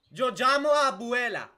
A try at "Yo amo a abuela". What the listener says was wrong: No, yo amo a abuela. No, you are saying llamo, and llamo is calling. You need to say amo.